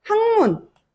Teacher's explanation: 비음이 앞에 있는 종성 자리에 평파열음에 영향을 주게 되면서 학문으로 발음이 된다